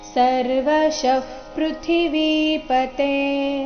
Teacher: ಶ ಆದ ನಂತರ ಇರೋ ವಿಸರ್ಗದ ಉಚ್ಚಾರಣೆ ಅರ್ಧ ಫ ತರ ಬರಬೇಕು, ಯಾಕಂದ್ರೆ ಮುಂದಿನ ಶಬ್ದ ಪದಿಂದ ಶುರುವಾಗ್ತಾ ಇದೆ